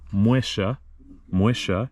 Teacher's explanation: here in Argentina the Double L is a sh sound